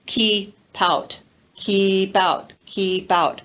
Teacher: linking the final consonant sound of keep with the next word which begins with a vowel sound o or ow so we have the linking of the key